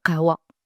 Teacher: il faut vraiment chercher un K guttural dans vraiment le fond de la gorge. Il y a des sons spécifiques comme ça qu'il faut travailler parce qu'entre, un mot avec un K et un mot avec un K, tout le sens du mot peut changer. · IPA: [q]